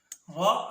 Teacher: را ادا ہوتی ہے زبان کے پشت والا کنارہ اور اوپر والے 2 دانتوں کے مسوڑے